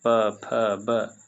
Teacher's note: प फ बोलिएगा तो होठ से आता है। बिना प को यानी बोलने के समय होठ सटाना ही होगा।